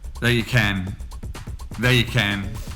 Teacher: And then you get the weak form, so it becomes y. And can also has the schwa or weak form, which is ken.